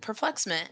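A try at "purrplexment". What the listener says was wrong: want you to say it again, but I want you to pronounce the purr.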